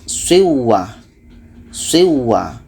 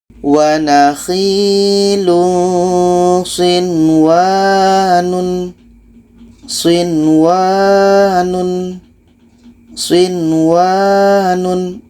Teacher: Ini adalah izhar wajib. Maksudnya nun jelas, waw jelas, dan tidak ada bacaan idgham di sini. Tidak ada bacaan nun masuk ke waw.